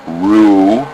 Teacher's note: This word also demonstrates how the vav, the middle letter in this case, becomes simply a carrier for the vowel. So instead of a vu sound, it gets an u sound. · When we see the letter chet at the end of a word with a patach or a kamatz vowel under it, instead of making it sound like cha, as it would seem obvious from what we've learned, in this exception we say ach.